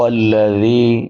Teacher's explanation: زال کے بعد یائے مدہ ہے، یا ساکن ما قبل کسرہ یعنی زیر ہے، تو اس کو ایک الف کے برابر لمبا کریں گے